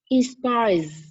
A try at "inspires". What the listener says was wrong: No, không phải là inspire mà in âm n xuống cái này. Inspires. Âm Z đâu? Có âm nữa. No, không phải in. Cái âm in của em đầu tiên là chưa rõ. Em cho âm in xuống rất là rõ.